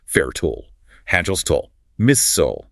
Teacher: The "ile" suffix is a major point of divergence, whereas like fertile, hostile, or missile, Americans tend to swallow the ending, treating it almost as an afterthought.